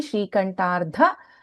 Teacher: In this Shrikantha, Tha is Mahaprana and Ardha Sharirini, Shrikantardha, Dha is Mahaprana.